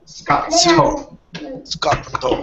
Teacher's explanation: there's like a small pause because of the double T. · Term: double consonant